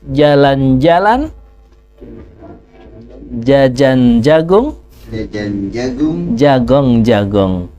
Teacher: ketika mengeluarkan huruf Jim tidak ada nafas yang keluar jadi juga tengah-tengah lidah tempelkan ke langit-langit mulut